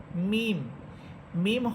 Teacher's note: এরপরে হরফ হচ্ছে মিম। মিম মিম হরফটার মাখরাজ হচ্ছে দুই ঠোঁট থেকে মিম হরফ উচ্চারিত হবে। মূলত দুই ঠোঁট থেকে তিনটা হরফ উচ্চারিত হয়, একটি হচ্ছে বা, আরেকটি হচ্ছে মিম, আরেকটি হচ্ছে ওয়াও।